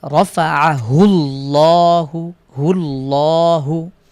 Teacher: রফাআহুল্লাহু, আল্লাহ শব্দের পূর্বে এখানে পেশ হয়েছে, বিধায় আমরা এটাকে মোটা পড়ছি। রফাআহুল্লাহ পড়ছি, হুল্লাহ, নট লা বা লা। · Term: মোটা করে পড়া